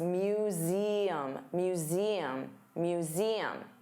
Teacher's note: So let's talk about the pronunciation for museum Z. So notice you have that voiced Z sound. Museum and there are three sounds.